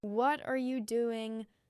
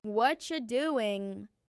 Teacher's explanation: If I say the sentence very clearly and slowly, it's, "What are you doing?" But in natural speech, it becomes, "What you doing?" The T and R blend, and you becomes ya. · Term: linking